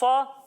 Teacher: جب ہم صاد کی ادائیگی کریں گے تو اس میں بھی سیٹی کی آواز تو آئے گی لیکن اسے ہم موٹا کر کے پڑھیں گے کیونکہ آپ کو پچھلے پروگرامز میں بتایا تھا کہ صاد حروف مستعلیہ میں سے ہے اس لیے اسے ہم موٹا کر کے پڑھیں گے.